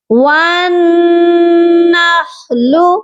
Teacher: نون مشدد پر ہمیشہ غنہ ہوتا ہے